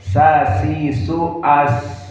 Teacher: maka Sin masuk kepada huruf alhams yang mana jika disukunkan keluar jaroyan annafs